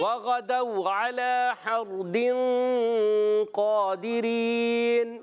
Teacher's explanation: وغدو میں غین ادا ہوتا ہے حلق کے اوپر والے حصے سے ، وغدو واو ساکن سے پہلے زبر، واولین نرمی سے ادا